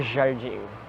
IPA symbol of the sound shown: ʒ